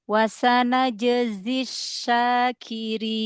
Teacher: Wasana jezi, tampakkan sofir pada zainya.